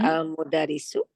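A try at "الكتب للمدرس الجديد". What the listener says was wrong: Itu bukan al. Yang kemarin udah dijelasin.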